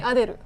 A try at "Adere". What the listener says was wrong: It's not Ru, it's Ray at the end.